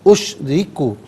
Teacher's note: اشرکو میں را کے نیچے زیر ہے، را کو باریک کر کے پڑھا جائے گا